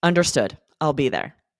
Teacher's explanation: your tone of voice kind of dropped there